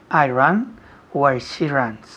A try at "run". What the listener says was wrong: Con la U, que pronuncia muy bien. I run where she runs. Run, no ran. Run. Es un poco cerrado. Tienes la boca cerrada. Run. Run.